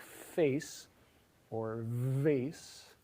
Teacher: If you think about what you're doing at the beginning of a sound like face or vase, what you're doing, at least if you're me, is bringing your lower lip pretty close to your upper teeth and obstructing the flow of air there so that there's some turbulence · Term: Labiodental sounds